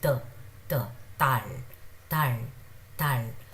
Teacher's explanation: this was just between D and T, like the very softly sounding tal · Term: Digat